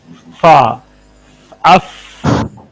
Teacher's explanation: सनाया सुफला और होंठ का दरमियान जो जगह है वहां पर ये ऊपर वाले दांत जो हैं उसके पेट में, नीचे होंठ के पेट में आकर लगते हैं, तो इससे फा निकलता है।